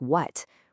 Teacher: wh in a word like what, which is kind of like a breathy w